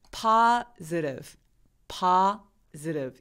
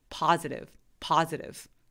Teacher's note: 자, 그래서 이 파즈를 발음할 때 제가 I 부분에다 정말 약간 밑줄을 쳐놨는데 이게 뭐냐면요. 얘를 강세가 파 부분에 오니까 나머지 모음들은 애매하게 이렇게 넘겨지는 게 또 영어의 특징 중에 하나거든요. 그래서 우리나라 말처럼 써있는 대로 그대로 발음하지 않고 애매하게 강세가 오지 않는 모음들은 애매하게 넘겨주셔야 돼요. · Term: 슈아